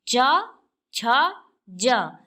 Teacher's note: च, छ, ज के उच्चारण में तालु पर अधिक बल पड़ रहा है, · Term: तालव्य